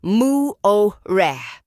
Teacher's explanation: Muore is pronounced with a clear rolled or tapped R sound in many accents.